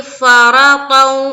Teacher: تو یہاں دیکھیے فرطا، را کو پر رکھیں گے، تا کو بھی منہ بھر کر کہیں گے، تا موٹے حروف میں سے ہے